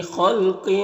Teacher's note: لفی میں یا مدہ ہے ایک الف کے برابر کھینچیں گے۔ خا اور قاف دونوں حروف مستعلیہ میں سے پر پڑھیں گے